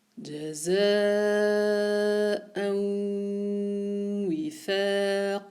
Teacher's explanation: Tanwin qui rencontre le waw. Donc, il y a un son nasal. Et pendant le son nasal, j'arrondis mes lèvres et je suis sur le point de sortie du waw.